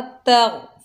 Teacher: गौइन हुरूफ़ मुस्तालिया में से है, मोटा अदा होगा